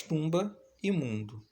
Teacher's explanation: E finalmente nós temos o fonema vogal nasal representado pelos dígrafos UM e UN, aparece nas palavras tumba e mundo